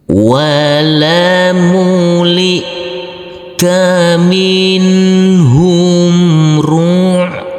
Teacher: Huruf ain yang bersukun ini harus kita alirkan. Jadi bedanya di sini untuk hamzah sukun tidak boleh ada aliran atau suara tambahan.